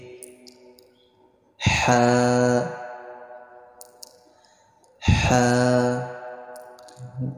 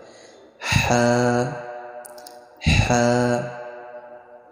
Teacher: গলা থেকে হালকা গরম বাতাস বের হবে